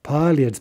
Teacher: Note the ye dropping out, but the L remains soft.